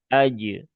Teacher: Kemudian ajrun ya tadi Hamzah sudah pastikan dia tipis. Kemudian jim jim punya sifat qalqalah aj. Nah ingat ya seperti tadi ya bukan ee rodad.